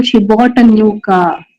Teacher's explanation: probably has main stress on car because secondary stress is on bought